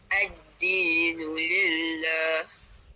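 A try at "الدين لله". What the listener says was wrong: Okey, lillah panjang sikit. 2 ataupun 4 rakaat. Ad-dinu lillah.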